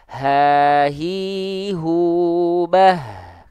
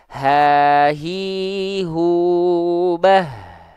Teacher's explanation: hak besar dilafalkan dari pangkal tenggorokan kita